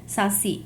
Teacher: eu tenho a sílaba tônica si, é uma oxítona